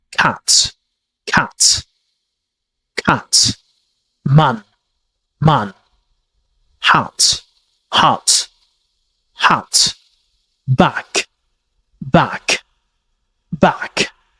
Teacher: very short front vowel sounds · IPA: /æ/